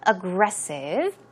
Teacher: Stress goes on, the second syllable